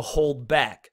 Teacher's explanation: they're 2 stressed syllables back to back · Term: spondaic